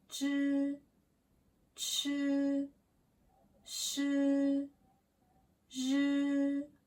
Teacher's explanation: Second group, your tongue is pulled back.